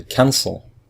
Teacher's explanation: if we listen to it, we say cancel. So the first syllable is stressed, so we just add ing.